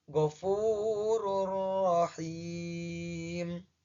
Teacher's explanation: Maka secara awalan bacanya ghafurun rahim. Tetapi karena dibaca menggunakan hukum bacaan idgham, bacanya menjadi ghafurur rahim